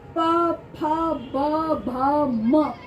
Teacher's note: दोनों होठ को आपस में स्पर्श करते हैं तब ये व्यंजन बाहर आते हैं प फ ब भ म पांचों ही वर्ण होठों की सहायता · पांचों ही वर्ण होठों की सहायता से, होठों को छूने के सहायता से यानी स्पर्श के सहायता से ये वाले व्यंजन बाहर आते हैं, इसलिए इनका उच्चारण स्थान ओष्ठ कहा जाता है।